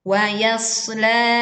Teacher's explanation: huruf shad tebal, maka desis yang keluar pun tebal, bukan tipis sehingga tertukar menjadi huruf sin. Maka saat kita membacanya, angkatlah pangkal lidah.